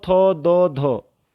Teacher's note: ठीक है, तो थो दो धो अगर बोलोगे आप तो जीभ आपकी दांत पे लगेगी, तो दंतीय व्यंजन के रूप में होते हैं